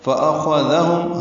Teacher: حمزہ اقصی حلق سے، خا پر ادنی حلق سے، ذال نرمی سے، ہم میں اظہار شفوی، فأخذهم اخذ، پھر خا ساکن ہے، اس پہ ہم سے یہ پر ہے، ذال نرمی سے ادا ہوگا۔